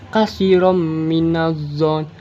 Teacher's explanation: Kasirom terdapat hukum bacaan idgham bigunah karena tanwin yang bertemu dengan huruf mim. Cara bacanya tanwinnya dimasukkan ke huruf mim